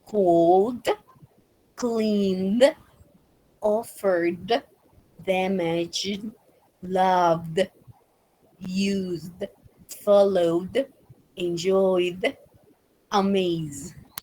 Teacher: vamos a tener más vibración en nuestras cuerdas vocales cuando las pronunciamos